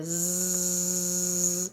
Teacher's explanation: Se vocês fizerem esse teste, vocês vão perceber que há vibração das cordas vocais. Então, trata-se de um som vozeado.